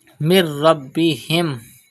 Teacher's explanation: Pronounce Ba with emphasis because Ba is a Qalqala letter and it is Mushaddad in this word.